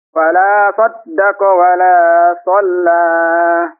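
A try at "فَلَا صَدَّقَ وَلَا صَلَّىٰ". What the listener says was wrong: Lagi, 2 harakat saja.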